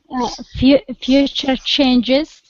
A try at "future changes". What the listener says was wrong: Perfect. Perfect.